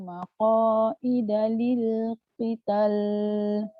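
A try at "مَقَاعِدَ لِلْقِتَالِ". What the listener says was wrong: Qital. Panjangkan mat tu. Alif dulu. Baru masuk kepada lam. Qital. Dia jangan lam dulu.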